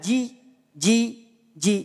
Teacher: Jim ini keluar dari tengah-tengah lidah